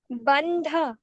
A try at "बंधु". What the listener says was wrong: मात्रा लगी है। पड़ी, हाँ, ऊ की मात्रा है, पड़ी मात्रा है। बंधु।